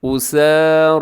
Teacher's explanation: बराबर लंबा कीजिएगा क्योंकि सीन और रा दोनों के ऊपर खड़ा ज़बर है